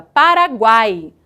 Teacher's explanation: a união dessas três letras ele só é possível acontecer Porque existe apenas uma delas muito forte que é o a que chamamos de vogal e as outras duas são semivogais · Observem o seguinte, quando falamos a palavra Paraguai, há uma tendência muito grande de que pronunciemos a letra A com maior força e a letra U e a letra I de maneira mais fraca, de maneira pincelada, Paraguai. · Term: tritongo